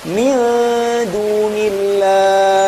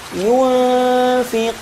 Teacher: menyamarkan suara huruf di antara sifat idgham dan izhar tanpa mentasydidkannya dengan menetapkan suara ghunah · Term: ikhfa